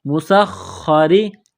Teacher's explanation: وسحابا، لام زیر بل، وسحابل مسخری، سین میں سیٹی کی آواز پیدا کریں گے، باریک کرنا ہے سین کو، خا کو دبانا ہے، موٹا کرنا ہے، مسخری، را زیری، را کو باریک کرنا ہے، بین السماء، سین کو دبانا ہے تشدید کی وجہ سے، سیٹی کی آواز پیدا کرنی ہے۔